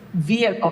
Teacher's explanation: The stress is on the first syllable. So, the H is not pronounced · That H is not pronounced because the stress is not on that syllable. It's vehicle.